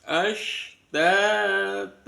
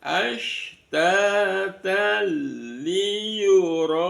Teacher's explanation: Maka namanya bacaan idgham bila ghunah. Dimasukkan tapi tidak didengungkan. Lagunah tidak mendengung.